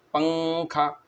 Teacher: پنکھے کے اندر نون کی آواز ظاہر نہیں ہوتی بلکہ ناک میں چھپ جاتی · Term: اخفا